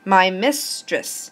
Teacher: that's two syllables but we know we have to alternate so the first syllable is the stressed and the next one is unstressed